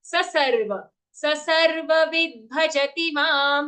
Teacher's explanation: Don't drag the sa. It is a short sa.